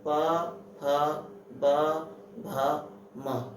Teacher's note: जिनको बोलने में ओष्ठ मतलब होठों का सहारा लिया जाए तो उसे क्या कहते हैं? ओष्ठ्य व्यंजन।